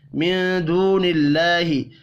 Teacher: نون ساکن کے بعد دال ہے، اخفاء حقیقی ہوگا. واو مدہ کو ایک الف کے برابر کھینچ کر پڑھیں گے.